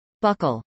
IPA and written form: bˈʌkəl (buckle)